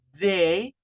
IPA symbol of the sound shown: ð